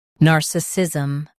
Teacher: In US, stress nar. In UK, stress na.